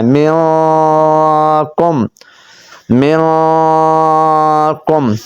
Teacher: میم نون زیر من، کاف میم پیش کم، من کم، من کم۔ اب نون ساکن کے بعد حروف اخفا آ گیا، کاف آ گیا، تو ہم نے یہاں پر غنہ کرنا ہے